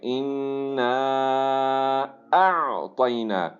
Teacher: نون کے اوپر تشدید ہے، یہاں پہ غنہ چلے گا